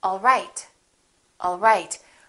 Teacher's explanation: my pitch goes down at the end for a statement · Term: falling intonation